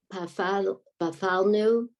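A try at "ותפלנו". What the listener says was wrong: Okay, this first letter is a tet. Tet, yeah, tafanu.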